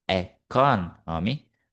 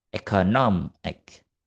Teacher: The stress moves significantly from the second syllable, economy, to the syllable before ik, economic. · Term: stress shifting suffixes